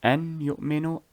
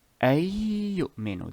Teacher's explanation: The noon was combined into another ya with a sukoon, so it would be ayyu'minu, ayyu'minu.